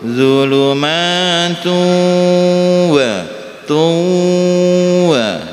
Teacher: Kemudian ada tanwin-tanwin yang bertemu dengan wawu, zulumatu wa tuwa. Jadi aslinya zulumatun wa, dibacanya langsung masuk melebur, ya, idgham bihunnah.